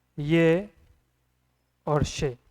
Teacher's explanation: तालु उच्चारण स्थान के अंदर आएंगे